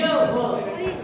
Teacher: जीभ को कोई संघर्ष नहीं करना होता है, अर्थात स्वरों के समान मिलता जुलता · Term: संघर्षहीन